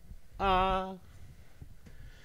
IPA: a